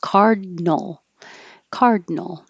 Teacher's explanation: So not cardinal, card. Your tongue goes up for the D and holds it until you're ready for the N.